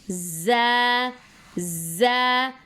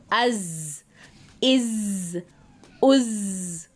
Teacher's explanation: ज़बान की नोक और दांत, दोनों दांतों की अंदरूनी किनारे से, यानी टिप ऑफ द टंग को हम जो हमारे सामने के जो दांत हैं उनका अंदरूनी जो हिस्सा है किनारा उसको टच करेंगे और ज़ की अदायगी होगी। ज़ ज़ में वो बजिंग साउंड, वो मक्खी की आवाज़ होती है ना भिनभिनाती, जो वो आवाज़ आनी चाहिए। स्ट्रेस के साथ पढ़ा जाता है उसको।